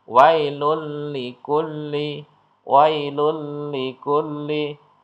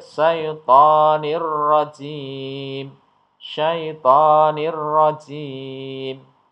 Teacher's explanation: Jadi dimasukkan huruf berikutnya dengan tidak dibaca mendengung. Artinya dibaca dengan jelas. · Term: idgham bila gunnah